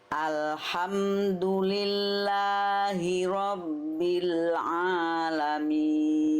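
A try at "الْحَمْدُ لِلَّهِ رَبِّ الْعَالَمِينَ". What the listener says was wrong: Tegaskan lagi huruf ro sedikit.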